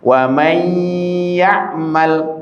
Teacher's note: Nunnya kita kemasukkan ke ya, oke. Seakan ya-nya tasdid, oke. Kemudian kita gunakan dengan ditekan selama kurang lebih 1 alif 2 harokat, itulah gunnah. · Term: idgham bi gunnah